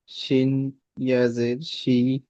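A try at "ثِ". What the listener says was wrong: শিন নয়, এটা সা আছে। সা সি।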